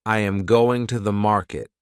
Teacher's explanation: the strong words are going and market. The small words are softer. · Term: rhythm